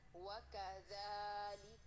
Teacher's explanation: پورے ہونٹوں کو گول کرنا ہے ٹھیک ہے. اور واو کو باریک رکھنا ہے.